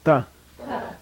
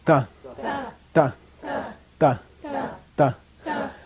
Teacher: It's right behind your teeth. It's that little ridge right behind your teeth. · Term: dental